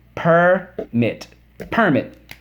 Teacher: the permit accent is on the first syllable